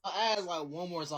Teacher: you flattened the diphthong in the word time, pronouncing it as Tom